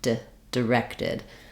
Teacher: almost kind of look like a little D sound D directed I'm really getting my length and my clarity in the second syllable